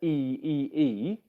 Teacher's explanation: when you're speaking quickly, your lips don't come out as wide for E